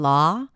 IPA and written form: lɑː (law)